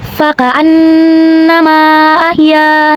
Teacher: Maka huruf mim kita panjangkan boleh 4 sampai 5 harokat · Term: mad zaiz munfasil